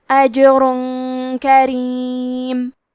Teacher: را پہ تنوین اب پیش ہے، پھر حرف الکاف آتا ہے کلمت کریم۔ کاف حروف الاخفاء میں سے ہے تو ہم یہ حکم کو غنہ کے ساتھ ادا کریں گے۔